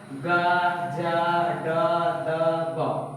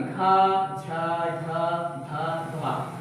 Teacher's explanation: जिन वर्णों के उच्चारण में आपकी स्वर तंत्रिका कंपन करती है वो आपका सघोष वर्ण कहलाता है